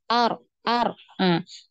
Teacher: karena taqrir ini pengertiannya berulang jadi harus berhati-hati ya di sini berhati-hati dari Getaran yang terlalu banyak jadi diusahakan di getarannya ini hanya sekali r r kalau dia tidak mengalir ya seperti itu bunyinya itu